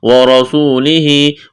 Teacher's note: واو کو پڑھتے وقت ہونٹوں کو گول کرنا ہے، را کو موٹا کرنا ہے